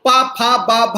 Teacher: पा फा बा भा ये ओष्ठ से बोले जाते हैं, इनको हम पवर्ग के सभी व्यंजनों को वहीं से बोलते हैं।